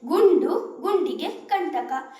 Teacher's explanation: ಈ ಪದಗಳಲ್ಲಿ ಅನುಸ್ವರದ ಮುಂದಿರುವ ಅಕ್ಷರ ಟವರ್ಗಕ್ಕೆ ಸೇರುದರಿಂದ ಟವರ್ಗದ ಅನುನಾಸಿಕ ನಾರೀತಿ ಧ್ವನಿಸುತ್ತದೆ